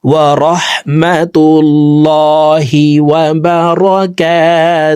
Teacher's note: হাকে ওয়াকফের ক্ষেত্রে সাকিন করে ফেলবো